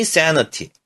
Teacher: 입을 크게 벌린 애 소리가 됐고